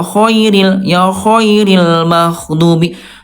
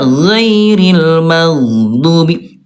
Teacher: huruf ghain. Kalau dia ada udara, nanti hurufnya akan tertukar dengan kha.